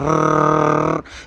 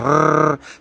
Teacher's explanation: और अक्सर बच्चों में आदत होती है वो इस तरह से करते हैं, खेलते हैं, तो घर वाले उसको टोकते भी हैं, कैसे कर रहे हो, है ना, जीभ को रगड़ क्यों रहे हो। तो ये जो रर का उच्चारण हम करते हैं तो इसमें कंपन उत्पन्न होता है जीभ में। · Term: प्रकंपी व्यंजन